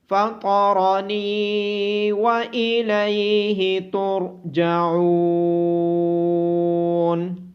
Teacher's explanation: ہا کی آواز گلے کے نیچے والے حصے سے آئے گی